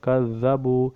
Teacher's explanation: حسابا، وَكَذَّبُوا بِآيَاتِنَا كِذَّابًا، یہ بھی ہم ویسے ہی پڑھیں گے، واو سے پہلے واو کے اوپر زبر ہے، اور کذبوا، زال کے اوپر تشدید ہے، اس لیے ہم زال کو 2 بار پڑھیں گے